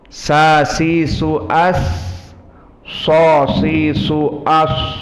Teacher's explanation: Atraful lisan mabaina atraf asanaya al-ulya dengan asanaya asufla, wa sufla aqrab